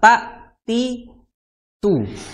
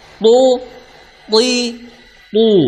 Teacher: huruf tho Dia memiliki sifat istila ya tebal jadinya gampangnya gitulah pangkal lidahnya naik akhirnya memunculkan suara tebal berbeda